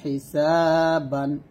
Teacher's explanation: দুইটা জবর আসলে সেখানে আমরা একটা জবর বাদ দিয়ে দিব, আরেকটা জবর স্থানে রেখে আমরা 1 লিপ পরিমাণ টেনে পড়ব